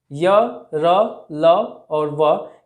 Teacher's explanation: जिन वर्णों का उच्चारण स्वर और व्यंजन के मध्य में रहता है, अर्थात ऐसे वर्ण जिनको उच्चारण करते समय ना ही पूरा स्वर का आवाज आएगा और ना ही पूरा व्यंजन का आवाज, तो वह अंतस्थ व्यंजन कहलाते हैं।